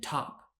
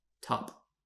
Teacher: need a puff of air same thing with t in top top has aspiration you can hear the air